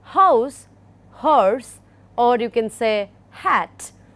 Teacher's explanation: the initial sound of house, you see that there is a free flow of air through the glottis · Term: glottal sound